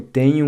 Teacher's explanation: The NH in Portuguese sounds similar to the ñ in Spanish, except that your tongue doesn't quite touch the roof of the mouth.